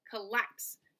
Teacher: So the second syllable is the stressed or emphasized syllable. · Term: I am